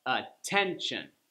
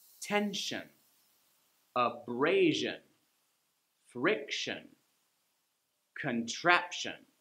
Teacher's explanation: you see how the second to last syllable gets the stress